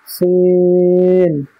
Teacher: সিন, সিনের মাখরাজ হচ্ছে জিভের আগা এবং সামনের উপরের নিচের দুই দাঁতের আগার সাথে লাগিয়ে উচ্চারিত হয় সিন